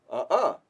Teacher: in Quechua, the glottal stop is very light